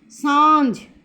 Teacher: हम जब सांझ बोलते हैं तो चंद्र बिंदु की आवाज़ आती है, अनुस्वार की नहीं